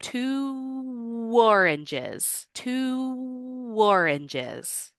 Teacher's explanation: Your lips are in the beginning position of the sound that W makes. So when you go from two and then open up to the O in oranges, you're going to hear a little W sound. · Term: co-articulation